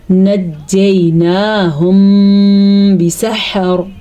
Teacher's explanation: میم ساکن کے بعد اگر با آ جائے تو وہاں پہ اخفاء شفوی کا قاعدہ ہوتا ہے، یعنی کہ وہاں پہ ہونٹ بند ہو جاتے ہیں اور غنے کی کیفیت پیدا ہو جاتی ہے